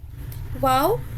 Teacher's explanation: वाव होटों को गोल करने से अदा होता है